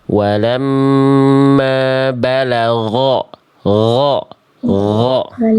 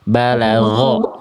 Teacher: Balagho kayak melafalkan ko tapi enggak pakai nafas. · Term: goinnya